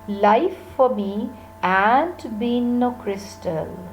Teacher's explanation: Life for me is not stressed, ain't been no crystal. This is stressed one.